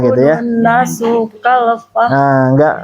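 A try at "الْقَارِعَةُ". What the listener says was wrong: Enggak pakai nada dulu. Nah, tadi sudah pakai nada. Nah, nanti bisa untuk melatih biar lancar dulu, enggak pakai nada biasa dulu.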